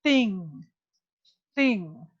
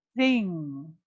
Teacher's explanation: the theta is the voiceless th